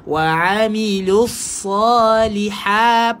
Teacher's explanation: Sa wa amilus sa. Masukkan dekat sad. Kena pastikan tebal.